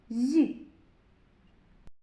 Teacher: А у слові зірка ми чуємо зь. Це м'який приголосний. І на звуковій схемі будемо позначати двома рисочками.